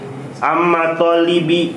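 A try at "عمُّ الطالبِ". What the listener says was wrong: Ya, kalau amma nggak boleh. Ammu talibi.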